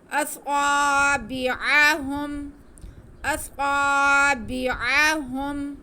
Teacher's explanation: खींचना किसी को नहीं है। आइन की आवाज़ को ध्यान से हलक के सेंटर वाले हिस्से से अदा करना है।